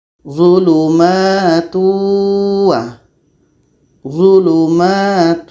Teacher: dengung yang ada pada tanwin ini terbawa oleh wau kalau seandainya tanwin ini tidak ada maka tidak akan ada dengung · Proses masuknya dengung kepada wa ini disebut dengan idgham nakish karena masuknya itu bukan secara sempurna. Seharusnya di sini adalah bunyi waw saja, tapi karena ada tanwin maka ada dengung juga. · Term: Idgham naqis